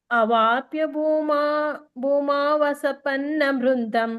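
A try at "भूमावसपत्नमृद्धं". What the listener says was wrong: ಸಪತ್ನ ಸಪತ್ನ ಸಪತ್ನ ಸಪನ್ನ ಅಲ್ಲ ಸಪತ್ನ ಮೃದ್ದಂ. ಅವಾಪ್ಯ ಭೂಮಾವಸಪತ್ನ ಮೃದ್ದಂ.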